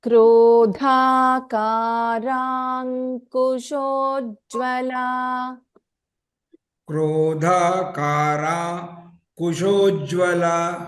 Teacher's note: Just remember, dha is a Mahaprana in this case.